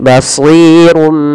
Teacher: tanwinnya dirubah suara nunnya awalnya kan basirun dengan nun sukun bunyinya nah sekarang diganti dengan huruf mim jadi basirum sambil ditahan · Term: iqlab